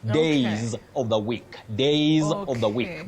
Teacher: that plural S takes what we call the voiced sound Z